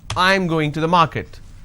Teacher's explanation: I mean by this I am going to the market now this is a statement and it's a flat intonation